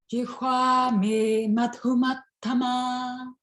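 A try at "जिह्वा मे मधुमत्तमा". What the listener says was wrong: So just give a little bit more on the aspirate on your do. Jihwa me madhumattama. Madhumattama. Madhumattama.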